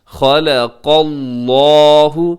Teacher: یہاں خا موٹا ہے، لام باریک ہے، قاف موٹا ہے، لفظ اللہ بھی موٹا پڑھا جائے گا، خلق اللہ۔